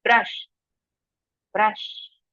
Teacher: Here B and R are flowing together. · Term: blend